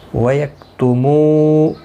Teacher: واو مدہ ہے، ایک الف کی مقدار کے برابر کھینچ کر پڑھیں گے، کاف ساکن کو ہلانا نہیں.